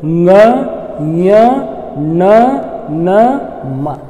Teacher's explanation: ನಾವು ಮೂಗಿನ ಸಹಾಯದಿಂದ ಅವನು ಉಚ್ಚಾರ ಮಾಡ್ತೀವಿ. ಒಂದು ವೇಳೆ ನೀವು ಮೂಗನ್ನು ಮುಚ್ಕೊಂಡು ಇವುಗಳನ್ನ ಉಚ್ಚಾರ ಮಾಡಲಿಕ್ಕೆ ಪ್ರಯತ್ನ ಮಾಡಿ ನೋಡ್ರಿ, ಅವಾಗ ಏನಾಗೋದಿಲ್ಲ ಅಂದ್ರೆ ಕಷ್ಟ ಆಗ್ತದೆ, ಸಾಧ್ಯ ಸರಿಯಾದ ಉಚ್ಚಾರಣೆ ಬರೋದಿಲ್ಲ. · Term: ಅನುನಾಸಿಕಗಳು